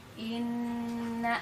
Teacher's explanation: ketika kita membaca inna, maka tahan begitu ya, tadi secara teori 2 harokat, tapi secara prakteknya sampai ke 3 ketukan gitu ya. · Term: nun bertasydid